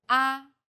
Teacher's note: The first tone is steady with a high pitch.